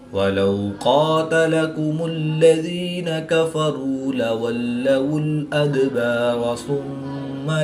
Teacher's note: میم مشدد میں ہمیشہ غنہ ہوتا ہے، تو یہاں پر ہم غنہ آنی کر کے پڑھیں گے